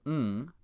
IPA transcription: ŋ